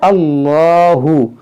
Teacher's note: इसमें जलाल से पहले ज़बर है, तो यहाँ पर हम मोटा पढ़ेंगे